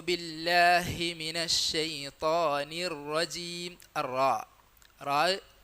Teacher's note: റാ തഫ്ഹീമിന്റെ അക്ഷരമാണ് വളരെ കട്ടിക്ക് വരേണ്ട അക്ഷരമാണ് അലാ മർത്തബയിലുള്ള തഫ് ആണ് റാഇനുള്ളത് നമ്മൾ പിന്നെ മലയാളത്തിൽ തറ